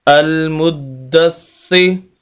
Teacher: हमज़ा ज़बर लाम अल, मीम पेश दाल मुद, दाल ज़बर सा दस, अल मुद्दस, सा ज़ेर सी, अल मुद्दस्सी। देखिए, दाल को भी सख्त करना है, सा को भी, क्योंकि दोनों के ऊपर शद है, और हल्की सी आवाज़ को रोककर